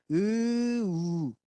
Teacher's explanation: 으를 발음하는 상황에서 으우 입술을 모아서 하면 우가 나오고요